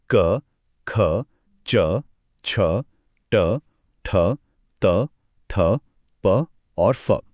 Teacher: अ घोष मतलब जिसमें कोई घोष, कोई गूंज या वाइब्रेशन ना हो। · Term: अघोष ध्वनियां